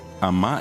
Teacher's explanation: Tiene una M. La M nasaliza la palabra.